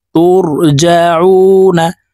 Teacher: এখানে তিন আলিফ টেনে নুনকে সাকিন করতে হবে